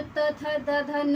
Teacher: दांत और जीभ के स्पर्श से जो बोले जाने वाले वर्ड को दंत्य कहते हैं। ठीक है, दंत्य जो ये त वर्ग का जो त, थ, द, ध, न है, ये आपका इसका उच्चारण स्थान दंत है।